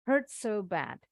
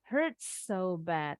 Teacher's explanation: Baca S-nya jadi sekali. Jadi nggak perlu kayak tasdid ya. Kalau tasdid kan agak ditahan bacanya.